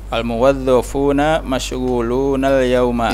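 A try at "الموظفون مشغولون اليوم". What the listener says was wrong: Iya. Sahih.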